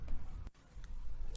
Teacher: syafawi hanya satu yaitu huruf ba cara membaca Ikhfa Syafawi yaitu dengan suara yang samar antara mim dan ba pada bibir kemudian ditahan kira-kira dua harakat atau dua ketukan